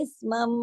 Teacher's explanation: پہ دیکھیے تشدید ہے، یہاں پر ادغام ہو رہا ہے، اسمم، سارے میم آپس میں مل رہے ہیں، اور یہاں پر لمبا غنہ ہوگا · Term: اکمل غنہ